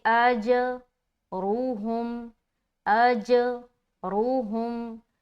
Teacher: اس کے بعد حمزہ کو جیم سے جب ملائیں گے تو جیم چونکہ حروف قلقلہ میں سے ہے تو یہاں پر ہم قلقلہ کریں گے، اور قلقلہ کہتے ہیں ملا کر جدا کرنے کو. حمزہ کو جب جیم سے ملائیں گے اور جدا کریں گے تب قلقلہ والی صفت پیدا ہوتی ہے